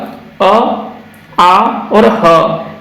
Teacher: ये तीन ध्वनि का आप तीन वर्णों के बारे में जरूर याद रखिएगा, अ, आ और ह। ये तीन वर्ण का उच्चारण हमारे मुख के कंठ से होता है।